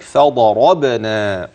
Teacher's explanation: الضاد المفخمة والراء المفتوحة بعدها كذلك فضربنا، إذن الضاد والراء والباء مقلقلة، على آذانهم، المد المنفصل ثم المد البدل ثم المد الطبيعي كذلك بعد الذال آذانهم.